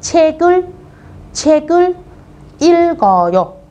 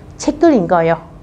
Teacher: chữ L giữ lại, chữ cờ bắn lên.